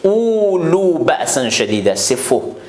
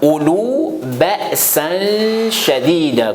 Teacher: On ne prolonge pas le hamza avec waouh.